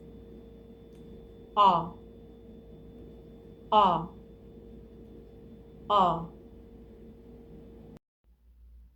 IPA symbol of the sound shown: ɑ